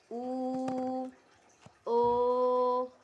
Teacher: vokal yang dihasilkan oleh gerakan turun naiknya lidah bagian belakang atau Pangkal lidah seperti u o nah berdasarkan strukturnya vokal terbagi atas vokal tertutup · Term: vokal belakang